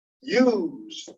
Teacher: there's an S that sounds like a Z